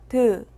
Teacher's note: 드는 영어의 T와 소리가 비슷한 무성음입니다.